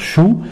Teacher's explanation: Pour la Dhamma, nous viendrons regrouper les lèvres et nous dirons Shu.